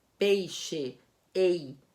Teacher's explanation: O E é a forte e a vogal, I é a fraca e a semivogal. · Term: ditongo decrescente